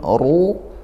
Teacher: Ajrun ghairu lin ya, fathah tidak sukun, ru ra-nya tafkhim tebalkan juga